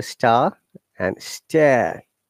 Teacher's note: I'm trying to pronounce this R sound according to the British IPA, where R is not pronounced at all.